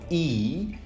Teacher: e is a high front vowel this means we can give the features plus high minus back